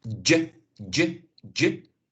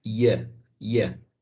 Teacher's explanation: You got the affricate j, j, j, and you have the glide yeah, yeah.